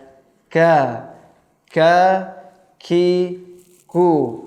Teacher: Jadi ka bisa dirasakan, ka enggak terlalu ke langit-langit yang bertulang, enggak juga terlalu ke langit-langit yang lunak yang tak bertulang, tapi di tengah-tengahnya ya